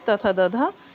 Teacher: द ध्वनि का उच्चारण स्थान दंत है।